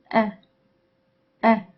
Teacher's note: By doing so, and because there is no nasal outlet, the airflow is blocked entirely, and the produced sound, which is hamza, is called a stop. Hamza is also voiceless, which means it is produced without vibration of the vocal cords because they are held tightly together, preventing vibration.